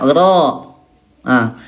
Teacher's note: huruf ro ayah Bunda sekalian, tempat keluarnya yang disentuhkannya dua tepi ujung sisi lidah